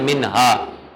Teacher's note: اظہار کرتے ہیں. نون کی آواز کو ظاہر کر کے پڑھتے ہیں نہ کہ چھپا کے پڑھتے ہیں